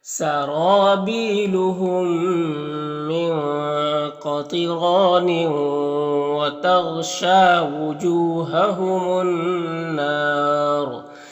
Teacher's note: जू में वाव मद्दा है, और यहाँ पर अलिफ लाम हुरूफ शमसी नून के शुरू में तो अलिफ लाम दोनों को नहीं पढ़ेंगे, नून मुशद्दद गुन्ना होगा, और वक्फ़ करेंगे तो मद्दे आरिज़ वक्फ़ी होगा, और रॉ को पुर पढ़ेंगे